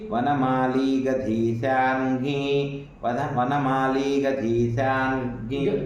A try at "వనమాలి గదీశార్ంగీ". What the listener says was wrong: గదికి ఒత్తు లేదు వనమాలి గదీశార్ంగీ శార్ంగీ శార్ంగీ శార్ంగీ శార్ంగీ అన్నారు మీరు గకారం రావాలి శార్ంగీ శార్ంగీ వనమాలి గదీ శార్ంగీ శార్ంగీ వనమాలి గదీ శార్ంగీ కొత్తు ఒత్తు పడుతుంది శార్ంగీ